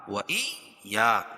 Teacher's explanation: یا پر تشدید ہے تو اس کو سختی کے ساتھ پڑھیں گے